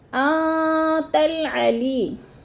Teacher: یا ساکن سے پہلے لام کے نیچے زیر آ گیا ہے تو ادھر یا مدہ، یا مدہ کو 1 الف 2 حرکات کے برابر لمبا کر کے پڑھنا ہے،